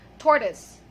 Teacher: So the last vowel sound there is a schwa sound.